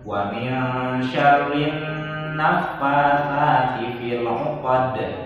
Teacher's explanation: nun bertasydid, maka bacanya harus ditahan ya